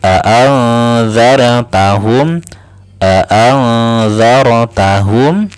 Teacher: nun sukun bertemu dengan za maka didengungkan ya. A'anzartahum, ingat ditahan dulu ya, jangan dilangsungkan. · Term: ikhfa